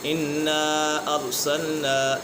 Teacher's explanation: یہاں پر مد منفصل ہے اور پھر مدہ کے بعد حمزہ دوسرے کلمے میں ہے تو اس وجہ سے مد منفصل ہوگا